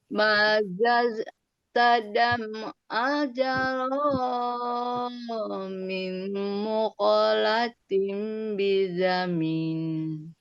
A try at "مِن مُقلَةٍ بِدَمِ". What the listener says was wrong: Ya, seharusnya nggak naik ya, turun.